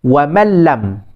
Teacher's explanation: nun tu masuk pada lam, tidak dengar, maksudnya idkhal. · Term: idgham